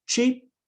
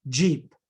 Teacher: the Africans remember there are only two in English uh and here they differ only in voicing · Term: affricates